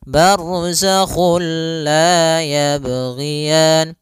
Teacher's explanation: dia bila gunnah berarti tidak boleh disertai dengan gunnah, tidak boleh ada penahanan · kita memasukkannya secara utuh, secara seluruhan kepada huruf lam, sehingga tidak menyisakan sedikit daripada bunyi huruf nunnya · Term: idgham bila gunnah